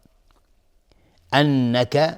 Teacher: نون تشدیددار دو حرکت غنه میدیم